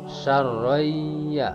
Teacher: ini adalah idgham bi gunnah karena ada tanwin menghadapi huruf ya. Membacanya harus didengungkan.